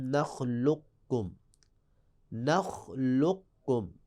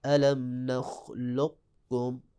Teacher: اب دیکھیں قاف جو ہے پہلے قوف آ گیا ہے جو کہ ساکن اور پھر فوراً کم، پہلے موٹا قاف پھر باریک کاف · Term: ادغام متقارب